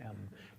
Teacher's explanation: You close your lips and allow the air to flow through your nose. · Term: bilabial nasal